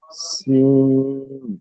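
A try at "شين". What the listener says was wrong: হ্যাঁ এটা সিন নয়, এটা শিন, সিন হলো এটা যেটা সিটির মতো আওয়াজ হয়, বিনা নোক্তা হলো সিন। কিন্তু যেটা তিনটে নোক্তা আছে সেটা হলো শিন, মোটা করে তাল বেশ উচ্চারণ হবে, শিন।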